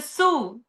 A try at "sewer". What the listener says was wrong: Sewer. You mean the sewer? No, you pronounce that like a real Brazilian. You took off the last syllable. Sewer,